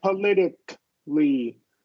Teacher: Not like a politically, right? There's no No schwa or release of the K sound, right? Politically. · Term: stop K